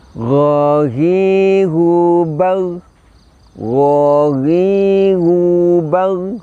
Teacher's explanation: kita bisa merasakan ketika mengucapkan huruf ghain, pangkal lidah kita terangkat, kemudian suaranya tetap dilepaskan atau dialirkan, tapi sekali lagi nafasnya kita tahan. · Huruf ghain ini kita ucapkan suara keluar dari puncak tenggorokan. Cara mengucapkannya adalah kita angkat pangkal lidah sama dengan kho sehingga suaranya menebal. Kemudian dari segi suara kita lepaskan atau kita alirkan suaranya, namun dari segi nafas, nafasnya itu tertahan.